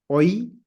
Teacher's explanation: The oi ends on e in pronunciation, right? Oi, which is the reason why we don't have euch, but euch.